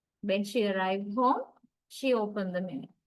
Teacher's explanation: the first tone group gets the rising intonation